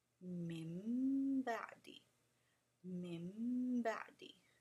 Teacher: When you change something, it's called iqlab, and in this case, we're changing the sound of the nun sakin to a mim.